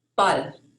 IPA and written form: bal (ball)